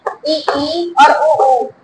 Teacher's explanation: संवृत का मतलब होता है कि जिन स्वरों का उच्चारण करने में हमारा कम मुख खुलता हो यानी ओपन वाली स्थिति मतलब कम मुख खुलता है उसे हम संवृत स्वर कहते हैं।